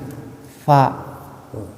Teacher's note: Kalau fa itu selalu ada mahmus. Mahmus itu desisan, jadi napasnya itu keluar. Makanya fa kan ada napas yang keluar.